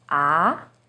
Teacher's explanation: starts with a little lower pitch and goes up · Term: second tone